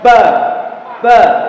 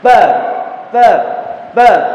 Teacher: Ketika kita baca huruf fa dengan menahan nafasnya, maka bunyinya ba, ba, tetap dari tempat keluar yang sama.